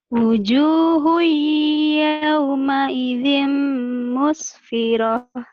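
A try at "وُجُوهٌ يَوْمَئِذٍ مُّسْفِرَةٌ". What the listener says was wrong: Madnya tambahin dikit. Tadi masih kurang tadi. Wujuh agak dikit lagi.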